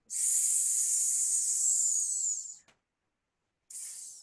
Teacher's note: s with no diacritical mark tells the tongue to move towards the teeth and we get what's known as a dental sibilant